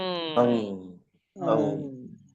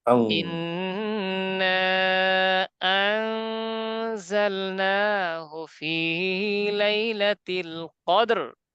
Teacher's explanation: গুন্না নাকে চলে যাবে আওয়াজ।